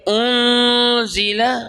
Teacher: یعنی نون کی آواز غنہ کے ساتھ 2 حرکت کے برابر لمبی ہوگی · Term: اخفاء